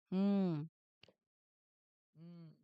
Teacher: this is a nasal sound. The air would go through your nose. So that vibration in your nose and around your lips is exactly what you're looking for.